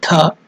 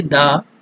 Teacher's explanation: The consonant Dha, another consonant Da. The first one is Mahaprana, more energy, Dha. Second one is less energy, Da.